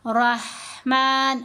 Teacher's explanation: ہا گلے کے درمیان والے مڈل پارٹ سے ہم نے اس کو ادا کرنا ہے